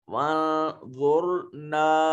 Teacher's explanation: وَانظُرْنَا اور نا میں الف خالی از حرکت ما قبل مفتوح الف مدہ ہے, اس کو بھی اسی طرح ہے, اگر نا کر کے پڑھیں گے نا تو معنی بدل جائے گا, نا منہ کھلا کر کے اور لمبا کر کے پڑھیں گے. یہ جہاں میں کہیں منہ کھلا کرنے کی بات کرتا ہوں تو اس کا مطلب یہ ہوتا ہے کہ آواز ناک میں نہ جائے, صرف منہ کے خالی حصے سے آواز نکلے تو وہ تلفظ بالکل ٹھیک ہوتا ہے.